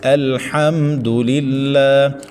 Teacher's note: دال کے اوپر صرف پیش ہے تو اس کو لمبا نہیں کرنا